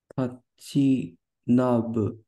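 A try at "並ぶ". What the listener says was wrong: Narabu. You're correct that sometimes this is read as na, but here it's a verb, it's nara. Narabu. It's read as na when we turn it into a noun sometimes. Like machinami, for example. So, narabu.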